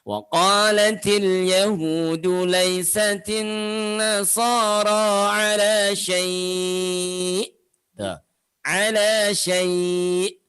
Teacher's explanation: Tekan saja di ujungnya supaya itu mengisyaratkan keberadaan huruf hamzah.